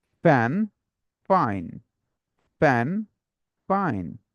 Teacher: তাহলে বলছে এই, say and day, wants to say May Day is a holiday, wants to say May Day is a holiday। অ্যাফ, নিচের ঠোঁট উপরের দাঁত এসে কামড় লেগে বলবে অ্যাফ